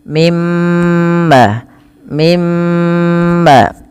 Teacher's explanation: suara nunnya dimasukkan ke mim dan ditahan sepanjang dua harakat